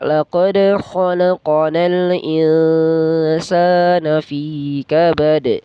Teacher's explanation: nun mati bertemu sa itu ikhfa, berarti dia disamarkan, didengungkan tapi disamarkan selama 2 harakat ya. Jadi bacanya laqad khalaqanal insana fi kabad.